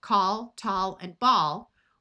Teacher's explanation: ALL usually has a broad sound of ah.